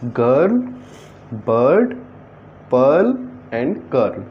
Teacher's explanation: in all these words we are pronouncing first a very short ah and then you are pronouncing ra just after the sound ah